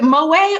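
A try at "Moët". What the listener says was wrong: Prononce pas le T. yeah, the French don't like to pronounce none of them letters.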